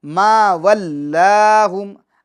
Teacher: ما ولاہم میں جو لام ہے وہ لفظ اللہ کا لام نہیں ہے، لہٰذا اس کو باریک کریں گے